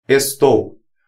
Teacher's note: O O é a vogal e o U semivogal, formando assim um ditongo decrescente